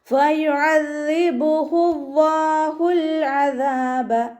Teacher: ദാലിന് ശബ്ദം വന്നിട്ടുണ്ട്, 2 ഹർഫുകൾ ഉച്ചരിക്കുന്ന കനം കൊടുക്കുക.